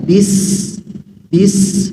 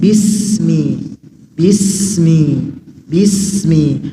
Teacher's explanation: Sin ditipiskan pengucapannya agar tidak menyerupai atau bercampur dengan huruf Shad atau Z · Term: huruf Sin